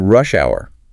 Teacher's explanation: noting the stress on the first word because it's a compound noun. Yeah, compound nouns usually have the stress on the first word.